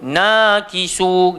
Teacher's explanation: mad asli yang kita kena baca panjang sepanjang 2 harakat. Jangan lebih setengah harakat pun.